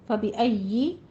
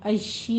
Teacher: فَبِأَيِّ یا کے اوپر تشدید ہے، یا کو 2 بار ادا ضرور کرنا ہے لیکن شین کی آواز نہیں لانی